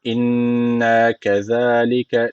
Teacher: Şedeli nun var. Mutlaka bir elif tutmamız gerekiyor.